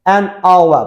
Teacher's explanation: saat sözündə H samit hərfdir, amma tələffüzdə saitlə tələffüz olduğu üçün an işlədirik